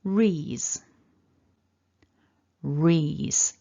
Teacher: Syllable 2 then, we've got that R, so we want to curl the tongue back to get that R. Then we've got the E, the long E vowel, and a voiced Z.